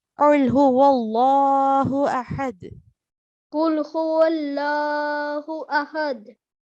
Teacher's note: make sure that you pronounce the lam mushaddad thicker.